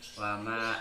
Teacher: bacaannya mad jaiz munfasil sebab mad bertemu dengan alif di luar kalimat, panjangnya 2,5 alif atau 5 harokat